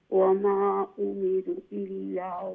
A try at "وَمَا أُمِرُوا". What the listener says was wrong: ওয়ামা উমিরু একটু লম্বা করো এটার মধ্যে মুনফাসিল নাই